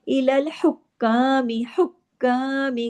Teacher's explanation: काफ के ऊपर देखिए तशदीद है डबल काफ है लेकिन तमाम बारीक हुरूफ है इसको हैवी नहीं करना है